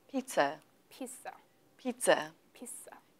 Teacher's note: it is a z, but we don't drag it out too much. It's nearly like a broken z.